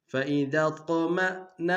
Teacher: طا کو موٹا ادا کریں گے، قلقلہ ہے قلقلہ بھی کریں گے